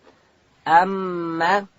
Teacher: د میم مخرج بیان کا. میم ادا کیږي د دواړو شونډانو د یو ځای کېدو څخه میم د شونډانو د وچې حصې څخه